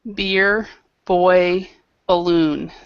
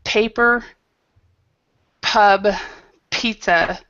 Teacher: word that starts with B will not move the paper words that start with P will move the paper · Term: aspirated